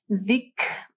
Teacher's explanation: جب آپ زال پڑھیں گے آپ کی زبان کی نوک جو ہے اوپر کے دو دانتوں کے پاس آئے گی